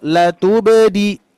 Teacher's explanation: pengucapan huruf ba sukun atau qalqalahnya itu jangan berat ya